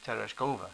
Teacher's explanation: put the accent on the third syllable